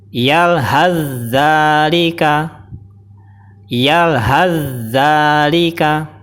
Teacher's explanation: Tadi sa sukun langsung dimasukkan ke zal. Jadi sa-nya sudah nggak terdengar. Jadi sifat hamesnya sa sudah tidak keluar dan sudah tidak terdengar. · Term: idgham mutajanisain